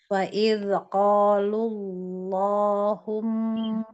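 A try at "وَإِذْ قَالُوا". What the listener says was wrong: untuk zalnya jangan wa id gitu, jangan dilepas ya. Wa id ya, ditahan saja gunnahnya. Wadz gitu jangan.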